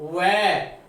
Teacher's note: फिर है व, इसका उच्चारण स्थान है दंतोष्ठ, दंत और ओष्ठ व, इसमें दांत और ओठों के माध्यम से इसके ध्वनि निकलेगी